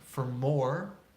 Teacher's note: we see the word for reducing to fur